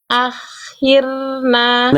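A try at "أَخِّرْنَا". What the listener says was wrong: Jadi kenapa tadi roh sukun yang Bunda sebelumnya itu mantul? Karena makhraj huruf ro-nya Bunda nggak tempel. Ya, tapi Bunda lepas. Jadinya ada bunyi akhirna. Jadi makhraj ro-nya jangan dilepas dulu sebelum ro-nya beres sifat-sifatnya ya, gitu.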